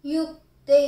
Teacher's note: yukte, u short, ka half, te long